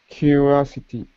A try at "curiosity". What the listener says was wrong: Curiosity. So you're missing this the I here. So it's curiosity.